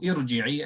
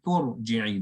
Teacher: You didn't hear the hamza. I didn't say to irji'i, I said turji'i.